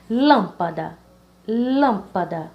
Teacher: Da, pa, lã. Então, a mais forte seria lã, sendo a primeira sílaba dessa palavra · É uma palavra que a antepenúltima sílaba ela é a mais forte. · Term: proparoxítona